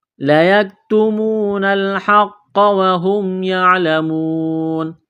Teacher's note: کاف کو باریک کرنا ہے، تا کو باریک کرنا ہے، واو ساکن سے پہلے پیش ہے، حروف مدہ واو ہے، ایک الف کے برابر کھینچنا ہے، قاف کو موٹا کرنا ہے، تشدید ہے تو دبائیں گے، سختی کریں گے قاف پر۔